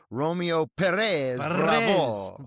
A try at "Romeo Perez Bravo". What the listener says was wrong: Bravo. You have to roll the R's.